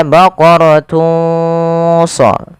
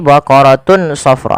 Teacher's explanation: samarkan suara tanwinnya kepada huruf shad. Maka baqaratun sa, bukan lagi baqaratun safra.